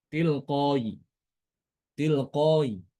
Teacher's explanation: Hamzah tadi diganti dengan huruf ya dan dibaca dengan rum.